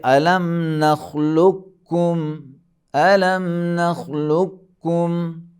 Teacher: لکھا جاتا ہے قاف لیکن پڑھا جائے گا کاف، کاف میں ادغام ہو کر ڈبل پڑھا جائے گا